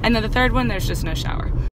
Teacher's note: notice how her tone is very conclusive, right? Like at the end, it's just very matter of fact. And you understand because of her tone that there's no more.